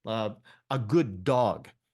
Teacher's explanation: So the first D drops off, becomes good dog.